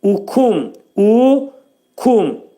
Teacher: Kəf hərfinin məxrəci, demək, dilimizin sonu və dilsəyin axır hissəsindədir.